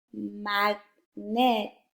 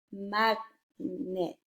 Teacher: sometimes the vowel sound in the second syllable is neither short or long. Instead, it is a schwa sound.